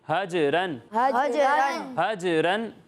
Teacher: جو جیم کی آواز لوٹتی ہوئی محسوس ہو رہی ہے نا، یہی کلکلہ ہے